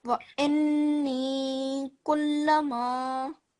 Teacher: So elongation letter stays the same. But this is a noon ghunna, a noon mushaddad, then you have to make a noon ghunna sound for 2 seconds as well.